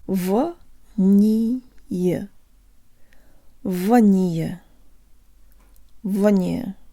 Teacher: the A and the last ye sounding like schwas and all three syllables de-emphasized